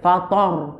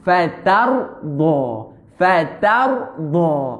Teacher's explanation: Tapi ta nipis. Ra tebal.